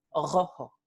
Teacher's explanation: es vibrante, pero ocurre o en el punto de articulación velar o en el punto de articulación uvular.